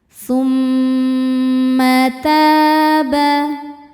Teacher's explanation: Mim tasydid hukumnya gunnah musyaddadah, sebab mimnya bertasydid. Cara membacanya didengungkan, bunyi m tahan kurang lebih 2 harokat.